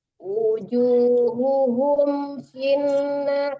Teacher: Ibu, humnya itu tidak dengung ya Bu, dari percepat.